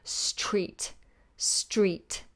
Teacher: So it's not a sh sound, it's a st. You give me the S and then the T and then the R.